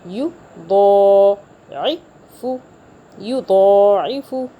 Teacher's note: عین کو حلق سے پڑھیں گے